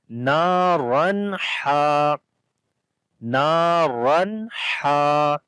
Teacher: Here is alif madda, and after the tanween which is on the ra, the next letter is from the throttle letter which is ha. So we make the clear sound of noon as we make izhar here without gunna